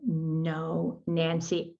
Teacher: you wash your hands or brush your teeth you can feel the little ridges behind the top front teeth and that's essentially where we want the tip of the tongue to rest